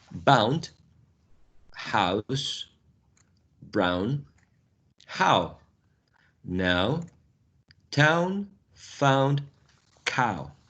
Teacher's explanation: So you start from low, central position, and the tongue glides upwards to a new position, which is high, still central. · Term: closing diphthongs